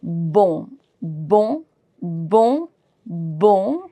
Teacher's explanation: N is going to be silent and I am pronouncing from my nose, nasal sound.